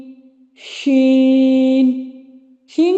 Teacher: شین کے ادا کرتے وقت آواز منہ میں پھیل جاتی ہے